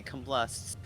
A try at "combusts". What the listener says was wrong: Combusts? There's no L in combust. It sounds like you said combusts with like an L in it.